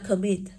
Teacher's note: Chúng ta đọc từ đấy là commit. Thì âm đấy của cô được phát âm là ơ